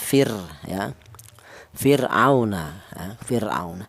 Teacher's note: Ada fir di mana ro mati ini di mana ro mati ini didahului huruf yang berharakat kasrah ini dibaca tarkik ya cara bacanya tipis